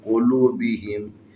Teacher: یہاں پر واو حروف مدی ہے، حروف مدی سے پہلے لام کے اوپر پیش ہے، مناسب حرکت ہے، اس کو تھوڑا سا کھینچ کے پڑھیں گے · قاف حروف استعلا میں سے اس کو تفخیم پڑھیں گے، موٹا کر کے پڑھیں گے